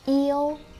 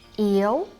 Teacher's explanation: yêu, flat tone, yêu means to love. It has totally different meaning with yếu, up tone, means being weak.